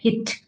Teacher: देखिए मैंने पहले भी वीडियोस में बताया है, आप वीडियोस देख सकते हैं ज्यादा एक्सप्लेनेशन के लिए, पर अभी मैं छोटे में बता देती हूँ कि टी टी साउंड को हम इंग्लिश में थोड़ा सा ठ साउंड देते हैं